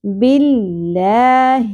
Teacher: لفظ اللہ کا لام باریک پڑھا جائے گا کیونکہ اس سے پہلے زیر آگی